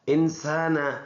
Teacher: نون میں ناک میں آواز لے کے جائیں گے، اخفا کریں گے ادھر